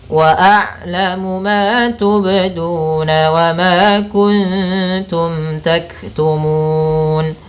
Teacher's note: lafal ma ada fathah bertemu alif, hukum tajwidnya mad tabi'i, panjang ma-nya 2 harokat